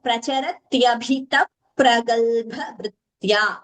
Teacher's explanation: here visarga followed by pa, it becomes upadmaniya, like we have all learned